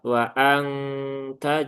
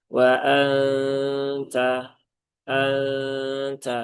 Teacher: Wa angta juga nggak tepat. Nah, jadi dia posisinya ya mendekati ke huruf nun, tetapi belum sampai ke makhrajnya nun. Nah, sehingga suaranya samar. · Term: ikhfa hakiki